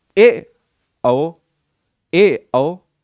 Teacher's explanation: उच्चारण मुख द्वार आधा खुलता है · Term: अर्ध विवृत